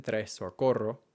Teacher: For the purposes of your own clarity in your own speech, I recommend focusing on the standard versions of most sounds. And in the case of the R, it is the tapped or the trilled ere, R as in tres or corro.